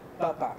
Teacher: Si digo papa, papa, y quiero decir que es mi papa, alargo la vocal final